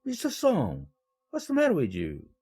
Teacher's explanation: 놀라움을 나타낼 때는 하강 억양을 호칭해서 사용합니다.